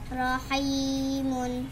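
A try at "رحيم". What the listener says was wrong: Di akhir ayat miyata wakaf je ke rahim. Nah, ingat.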